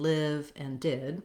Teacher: it's actually a lax high front vowel I, like in live and did